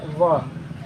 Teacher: व में दंतोष्ठ, यानी दांत से भी और ओष्ठ से